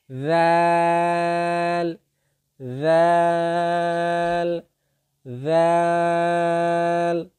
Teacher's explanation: জিহ্বার যেই আগাটা, এটা সামনের ওপরের দুই দাঁতের আগার সঙ্গে লাগিয়ে দিবেন। জিহ্বার আগা সামনের ওপরের দুই দাঁতের আগার সঙ্গে লাগিয়ে দিয়ে উচ্চারণ করবেন